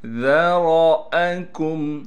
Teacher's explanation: یہاں پر بھی وہی قاعدے لگیں گے جو میں نے یہاں اوپر بتلائے ہیں، لیکن یہاں یا پر مد نہیں ہے، لہٰذا یہاں پر ہم 3 الف کی مقدار کے کھینچنے کے بجائے ذال کو 1 الف کی مقدار کھینچیں گے۔ ذرأکم، ذال کو باریک کر کے پڑھنا ہے اور نرم پڑھنا ہے۔ را کو موٹا کر کے پڑھیں گے، را کے بعد الف لکھی ہوئی ہے لیکن یہ الف نہیں، اس پر زبر آ گیا، لہٰذا صاف کر کے حمزہ کو ادا کریں گے۔